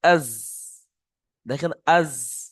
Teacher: জীবের আগা সামনের উপরের এবং নিচের দুই দাঁতের আগার সাথে লাগিয়ে উচ্চারিত হয় · জিবটা দুটো দাঁতের মাঝখানে লাগছে আগায় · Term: 13 নম্বর মাখরাজ